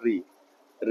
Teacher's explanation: ऋ ऋ जो है वो आपका मूर्धा से ही बोला जाता है